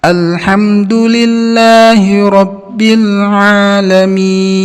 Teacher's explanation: huruf nun nya berjalan sedikit tidak boleh ditahan alamin di sini contoh pada huruf lam dan mim suaranya mengalir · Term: sifat tawasut